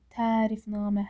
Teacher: Tərifnamə həm ə uzanır, həm də namədə A uzanır.